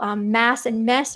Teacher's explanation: So for example, mass and mess are both pronounced mess. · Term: bat-bet merger